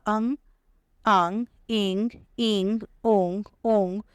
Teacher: मुखेन सह नासिकया अपि उच्चारिताः स्वराः अनुनासिक स्वराः सन्ति